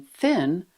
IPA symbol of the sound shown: θ